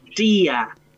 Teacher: la lengua se va más atrás en el paladar y uno dice día